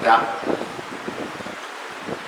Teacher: ഈ അണ്ണാക്കിന്റെ മൃദുവല്ലാത്ത ഭാഗം, അതായത് പല്ലിന്റെ തൊട്ട് മുകളിലുള്ള ആ പലേറ്റ്, അവിടെ സ്പർശിച്ചിരുന്ന ഒരു ശബ്ദമാണ്